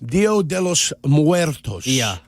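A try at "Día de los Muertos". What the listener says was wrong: Dia, yeah, it's not Dio, it's Dia. That means day. Dia means day.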